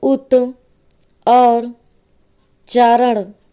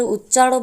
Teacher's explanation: तो यहाँ पर पहले शब्द का अंतिम अक्षर ता वर्ण है और दूसरे शब्द का पहला अक्षर चा है, तो ता का परिवर्तन आधे चा में हो जाता है, क्योंकि दूसरे शब्द का पहला अक्षर चा वर्ण है। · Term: व्यंजन संधि